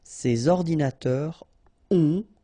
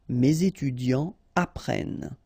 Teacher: you don't make the liaison between this word and the verb that will come after.